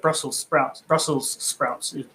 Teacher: you don't pronounce the the s at the end it's just brussels sprouts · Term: without the s